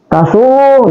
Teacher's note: Tasur, dia juga ditekan, teman-teman, ya. Tasur, jadi bukan hanya tebal tapi ditekan juga